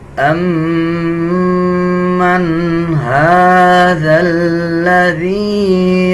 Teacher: کھڑا زبر کو 1 سیکنڈ لمبا کریں گے، ذال اور لام کو ملا کے پڑھا جائے گا۔ اس ذال کو اس یا کے ساتھ ملائیں گے، یہ حروف مدہ ہے، اس کو 1 سیکنڈ لمبا کر کے پڑھیں گے۔